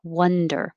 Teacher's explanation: the vowel is uh as in up so the jaw can stay more closed